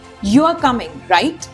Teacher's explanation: A rising tone shows it's a question. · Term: intonation